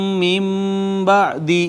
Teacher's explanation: نون ساکن کے بعد با حرف اقلاب ما قبل نون ساکن کو چھوٹی میم سے بدل دیا، اقلاب ہو گیا